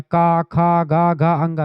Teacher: का वर्ग का जितने भी का, खा, गा, घा, अंगा, ये सब कंठ से निकलते हैं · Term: कंठ ध्वनि